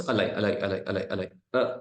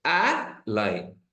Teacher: But when I say a lie, see, lie is at the bottom. When I say a, I'm raising the pitch. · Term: stress